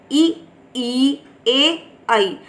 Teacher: अग्र स्वर के उच्चारण में जीवा का अग्र भाग उठता है।